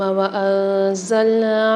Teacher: نون ساکن کے بعد زا آ رہی ہے، یعنی یہاں پر اخفا غنہ والا قاعدہ ہو رہا ہے، یہاں پر غنہ کر کے پڑھیں گے۔ نون کے ساتھ الف مد آ رہی ہے، اس کو بھی ایک الف مدار کھینچ کے پڑھیں گے۔